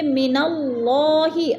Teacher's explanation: من اللہ، اللہ پر پڑھا جائے گا کیونکہ اللہ سے پہلے لفظ نون کے اوپر زبر ہے تو اللہ کو پر کر کے پڑھیں گے